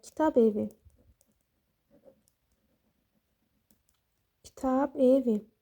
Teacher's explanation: Bdan sonra saitlə başlayan söz gəldiyinə görə burda B olduğu kimi qalır. · Baxın, burada b-dan sonra sait gəlibdir. B-dan sonra sait gəlib. Ona görə də b olduğu kimi qalıb.